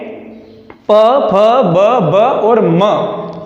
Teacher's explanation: ये सब आपस में होठों को टच होते हुए होठ की सहायता से उच्चारित होते हैं ये वर्ण, तो इसलिए इनका जो उच्चारण स्थान है वह सभी ओष्ठ वर्ग हैं।